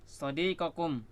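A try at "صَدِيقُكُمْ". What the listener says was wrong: Sodiku. Iya, domahnya jangan dirubah jadi fathah ya, tetap domah di sini. Sodikun ya, teman.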